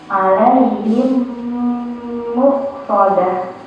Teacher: Jadi kayak ada dua mim kan, ada dua mim ya. Jadi bacanya tuh agak ditahan gitu mimnya ya, dan agak berdengung juga di hidung. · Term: idgham mim